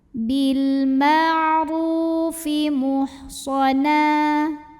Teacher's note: Mad tabi'inya mad tabi'i zahiri karena ada waw sukun yang didahului baris dhammah. Cara membunyikannya, ro-nya kita panjangkan 2 harokat saja.